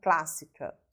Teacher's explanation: Observem que a sílaba tônica está no clas e, por ser proparoxítona, ela é acentuada, porque toda proparoxítona é acentuada.